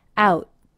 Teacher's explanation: Also notice makes a stop T on the word out. He does not release it out. He simply brings his tongue into position for the T, out, cutting off the sound.